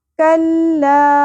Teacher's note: मदे मुनफसिल आ गई, 3 अलिफ के बराबर खींचेंगे